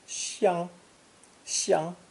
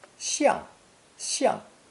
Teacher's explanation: pronounced either first tone, xiang, xiang, or fourth tone, xiang, xiang, depending on the meaning